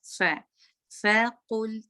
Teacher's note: फ में एयर भी निकले, जब आप बोल रहे हो आपके होंठों के सामने अपने हाथ लाएं तो आपके फील होगा एयर निकल रहा है